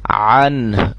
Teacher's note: آخر میں ہا کی آواز بھی محسوس ہو، یعنی کہ عن، عن نہیں، عن، عن، ٹھیک ہے جی، آواز محسوس ہو رہی ہوگی آپ کو۔